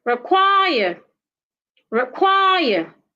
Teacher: For example, the word require. Require has two syllables and it's a preposition, so you need to stress the second syllable.